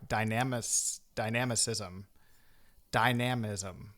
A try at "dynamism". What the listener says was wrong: Dynamism. I think you were putting the emphasis on the wrong Yeah, exactly.